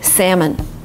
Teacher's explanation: With an L. But in America, you just omit L and say salmon.